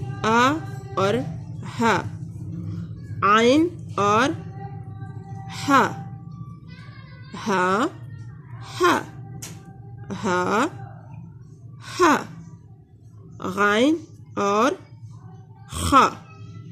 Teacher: ये है हमारे पास हुरूफ़े हल्किया जो कि हल्क से अदा होते हैं